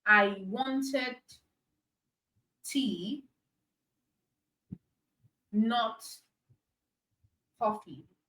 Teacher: there's stress on the word tea there is stress on the word coffee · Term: contrastive stress